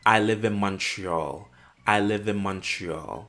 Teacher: the N in the word in sounds like an M, and this is called bilabelization. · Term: assimilation